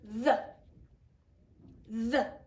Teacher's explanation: that's the voiced sound for the digraph t h